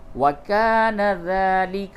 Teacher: وَكَانَ ذَلِكَ عَلَى اللَّهِ يَسِيرًا، الف مدہ ہے، کھینچیے، وَكَانَ ذَلِكَ، ذال کھڑا زبر ذا کو کھینچیں